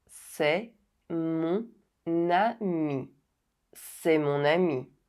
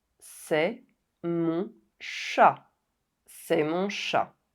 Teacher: The consonant N is not silent anymore and it is pronounced with the vowel sound that follows. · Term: liaison